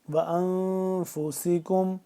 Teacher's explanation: انفو، نون ساکن ہے تو اس پہ ہم کیا کریں گے، اخفا کریں گے، یعنی کہ ناک کے اندر لے جا کر اس کو ہم پڑھیں گے